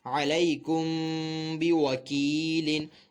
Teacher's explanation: میم ساکن کے بعد جو ہے حرف با آ رہا ہے تو یہاں پر میم ساکن میں اخفاء شفوی کا قاعدہ ہوگا اور میم ساکن میں غنہ بھی کیا جائے گا. غنہ اس صورت میں کریں گے جب ہم با کو ملا کر پڑھیں گے.